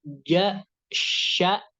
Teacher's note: Nah, termasuk daripada salah satu makhraj huruf shin itu adalah dia terdapat di wastul lisan wa ma yuhadhihi minal hanakil a'la. Nah, jadi huruf shin itu adalah dia letaknya berada di pertengahan lidah yang bertemu dengan langit-langit bagian atas. Nah, di situ ada 3, jim, shin, ya.